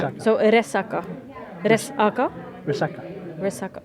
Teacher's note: you put the emphasis on the middle syllable.